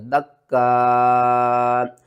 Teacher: وقف کی صورت میں حمزہ کو جب ساکن کریں گے تو جھٹکے کے ساتھ پڑھیں گے